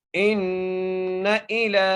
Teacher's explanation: حمزہ کو نون سے مضبوطی سے ملائیں گے، نون پر غنہ کریں گے. حمزہ کی نیچے زیر ہے، لام کے اوپر کھڑی زبر ہے تو کھڑی زبر کو ہم ایک الف کی مقدار کھینچ کے پڑھیں گے.